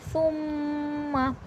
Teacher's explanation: तो यहाँ पर गुन्ना होगा। सा नरमी से पढ़ा जाएगा और मीम पे गुन्ना होगा